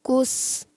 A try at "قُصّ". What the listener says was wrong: قص. موٹا کریں. قاف کو بھی آپ نے موٹا رکھنا ہے اور صاد کو بھی. صاد کو قاف سے بھی زیادہ موٹا رکھنا ہے. یعنی قاف صاد پیش قص.